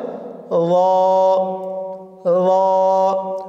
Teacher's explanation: জিহ্বার আগা সামনের উপরের দুই দাঁতের আগার সঙ্গে লাগিয়ে উচ্চারিত হয় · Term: জোর মাখরাজ